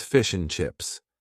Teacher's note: the word and is in its weak form, and we basically only say N.